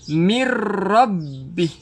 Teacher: Bacaannya kita masuk terus dekat ra. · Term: idgham bila gunnah